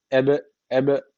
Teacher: için burada kalkale tecvid var ne yapıyoruz hafif bir vurguluyoruz dudaktan dudak harfi olduğu için dudaktan vurguluyoruz